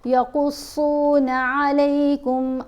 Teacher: قاف اور صاد دونوں کو ہم نے موٹا پڑھنا ہے